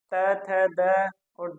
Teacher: दंत्य है, दांत से स्पर्श करके बोला जाता है